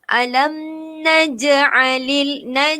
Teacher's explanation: perlu lantunkan bunyi sebab huruf jim ataupun huruf ja adalah huruf qalqalah. Alam naj'alil Alam naj'alil lil tak boleh huruf lam mati ni bukan huruf qalqalah.